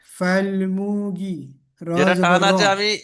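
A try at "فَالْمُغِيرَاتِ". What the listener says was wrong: মুটা টান নেই কিন্তু, ফাল মুগি, গিটা টান আছে, গইন ইয়াজের গি, ফাল মুগি।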